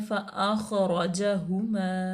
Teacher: आख ख्वा जो है वो साकिन है और हरूफ मुस्तालिया में से है, रा पूर्व पढ़ा जाएगा क्योंकि रा मफ्तू है। उसके बाद ये भी सेम, जीम जो है वो मफ्तू है, हा मज़मूम है और मीम अलिफ मद्दा है।